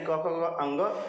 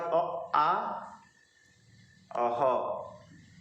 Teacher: क ख ग अंग मतलब क वर्ग, और इसके बाद अ आ ह, ये आते हैं कंठ के अंतर्गत